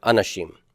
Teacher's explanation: And where's the accent on anashim? It's on the final syllable, right?